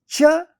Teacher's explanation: Cha originates at palate, therefore it is called a palatal sound.